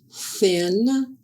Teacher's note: air is blocked by the tongue in light contact with the upper teeth. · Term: unvoiced TH